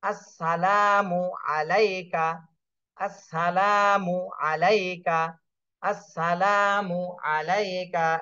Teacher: পারেন আসসালামু আলাইকা এখানে লামে শুধু এক আলিফ টান দিতে হবে আসসালাম মুতে টান দেয়া যাবে না